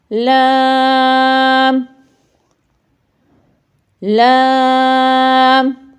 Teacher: ہماری زبان جو اس کی نوک ہے ہمارے اوپر والے سامنے کے دانتوں کے پیچھے تالو سے جب ٹکراتی ہے وہاں سے ٹچ ہوتی ہے تو لام ادا ہوتا ہے